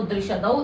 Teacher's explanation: द्रि भी अनुदात्त रहेगा, औ अनुदात्त रहेगा, श उदात्त है, और उसके पश्चात उदात्त सूत्र अनुदात्त को स्वरित हो जाता है, उदात्त अनुदात्त से स्वरित से। अतः शब्द का स्वर होगा दृशदौ का द्रि अनुदात्त श उदात्त दौ स्वरित